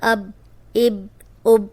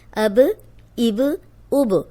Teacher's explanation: اب اس کو ایسے نہیں پڑھنا اب اب اب، روکنا نہیں ہے. ٹھیک ہے، یہ ہلا کے پڑھنا ہے